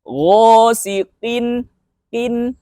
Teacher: cukup bacanya dengan cara menekan lidah bagian belakang ke langit-langit atas yang lunak ya, paling belakang itu